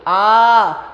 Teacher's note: देखो जो छोटा होता है बेटा ये हमारा मूल स्वर होता है, छोटा अ, क्योंकि इसे बोलने में समय बहुत कम लगता है और बहुत आसानी से हमारे मुंह से निकल जाता है, जैसे अ अ अ अ। ठीक है, लेकिन जब आप बड़ा बोलते हो आ, तो इसमें दुगना समय लगता है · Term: बड़ा आ